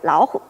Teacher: in the dysyllabic word Laohu, tiger, the first syllable sounds like a tone 2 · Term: Tone Sandhi